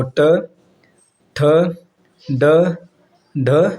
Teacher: जो आपका ट वर्ग में आती हैं वो आपका मूर्धन्य होती हैं